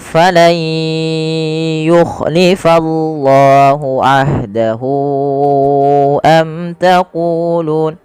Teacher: Diganti suara nunnya menjadi suara ya. Kemudian langkah kedua ditahan dengan gunnah.